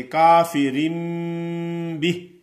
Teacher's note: یہ حرف کی آپ کو سمجھ آئی ہوگی کہ نون ساکن اور تنوین کے بعد بتایا گیا تھا کہ با کا حرف آ جائے تو نون کو میم سے بدل کر پڑھیں گے